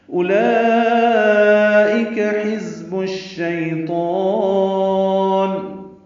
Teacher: اولئک حزب الشیطان، اولئک مد متصل ہے، کھڑا زبر کے بعد حمزہ آنے کی وجہ سے حمزہ یا کی شکل میں ہے، کاف باریک ہے، حزب میں ہا وسط حلق سے ادا کریں گے، ذات صفیر کی آواز سے ادا کریں گے، با کو شین سے ملانا ہے، بش میں ادغام شمسی ہوگا